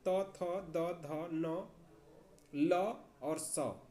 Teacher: जिनका उच्चारण दांत से हो उसे दंत वर्ण कहते हैं